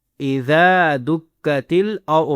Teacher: رو کو موٹا کرنا ہے اور ضاد کو ہی موٹا کرنا ہے